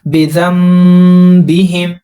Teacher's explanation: اب یہاں پر یہ سیم ہے، یہ سیم ہے، اور یہاں پر تھوڑا ڈیفرنٹ ہے کیونکہ نون ساکن درمیان میں آ رہا ہے۔ نون ساکن کے بعد با آیا تو یہاں پر اس نون ساکن کی آواز کو میم میں تبدیل کرنا ہے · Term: اقلاب